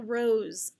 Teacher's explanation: by a z like zebra or an s like rose a voiced s